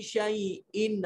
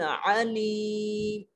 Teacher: حمزہ کو خالی منہ سے پڑھا جاتا ہے، آواز کہیں ادھر ادھر نہیں لے کے جاتے، اور عین میں آواز کو حلق میں لے جاتے ہیں۔ وَهُوَ بِكُلِّ شَيْءٍ عَلِيمٌ، شَيْءٍ ان کو عام سادہ انداز میں پڑھیں گے اور کو حلق میں لے جائیں گے۔